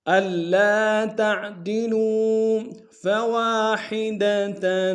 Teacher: ألا تعدلوا فواحدة، واو کے ساتھ الف مدہ ایک اعتدال میں کھینچیں گے، ہا کو گہرائی سے ادا کریں گے، تا کے اوپر تنوین ہے، غنہ کریں گے۔